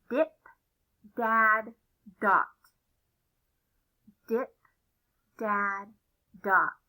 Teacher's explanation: d is a voiced sound it makes your vocal cords vibrate a lot so you can feel it